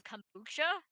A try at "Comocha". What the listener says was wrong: Como? Cha. Como? I guess it's kind of like kombucha, but take out the B.